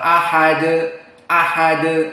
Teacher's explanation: Hamzah muraqqaqoh Wal ha murqaqoh waddal muraqaqoh maka semuanya murqq dan Dal di sini disukunkan menjadi Qalqalah almutawasit karena di akhir kalimat